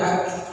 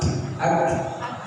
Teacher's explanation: Ya, contoh huruf kaf. Kaf itu punya sifat hams, angin ya, mengalir napas. Jadi ketika menyebutkan yang harus ada anginnya ak.